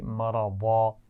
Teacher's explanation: اگر ہم اس پر وقف کر رہے ہیں تو ہم کیا کریں گے؟ اس کو الف مدہ سے یا کھڑی زبر کی آواز سے بدل کر پڑھیں گے. مرضن کو پڑھیں گے مرضا.